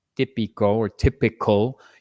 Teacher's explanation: in English, if you were pronouncing, típico or typical, you're going to want to blow a lot of air out, breathe a lot of air. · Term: aspirated